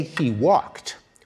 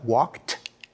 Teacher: When we say he walked, we pronounce the ed like a t